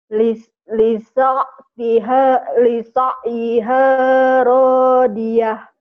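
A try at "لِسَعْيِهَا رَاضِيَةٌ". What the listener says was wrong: Itu ainnya belum bisa keselak ya. Lisa iha rodiyah.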